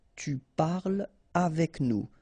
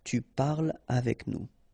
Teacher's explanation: no liaison here between parle and avec